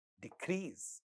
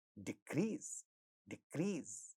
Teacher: When the second syllable is stressed, when this is used as a verb, then at the initial position of the stressed syllable, we have ka sound. Therefore, it gets aspirated. So, it becomes decrease.